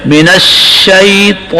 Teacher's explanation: طا کو ہم موٹا پڑھیں گے، کون سی صفات کی وجہ سے؟ استعلاء اور اطباق